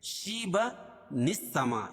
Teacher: تنوین کے بعد اگر حمزہ وصل ہو اور اس کے بعد آنے والا حرف ساکن ہو تو تنوین کے نون کو زیر دیتے ہیں، کیونکہ حمزہ وصل درمیان میں گر جاتا ہے